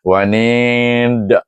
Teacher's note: dan alif an nun ya ni ada ya ya huruf mad dal sama juga disukunkan dan dibaca dengan anid alif sukun 2 emp atau enam dan qalqalah kubra dan dilantunkan bacaannya